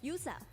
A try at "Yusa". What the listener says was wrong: It's Yusa. Okay, it's not Yosa, it's Yusa.